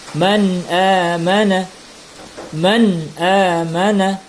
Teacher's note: Hukum nun di sini adalah izhar. Nun mati dibaca jelas, tidak berdengung.